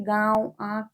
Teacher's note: नाक और मुंह से जो शब्द बोले जाते हैं वो अनुनासिक होते हैं, जैसे गांव, आंख, ये चंद्र बिंदी हो गई, ये अनुनासिक।